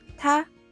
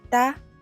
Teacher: The sound changes from unvoiced t to voiced d.